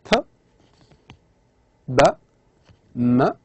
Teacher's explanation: Simply, it's both lips. Those sounds which are articulated by both lips. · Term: bilabials